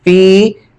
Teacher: क्योंकि इस या साकिन से पहले जेर है, या मद्दा, इसको एक अलिफ के बराबर खींच के पढ़ेंगे।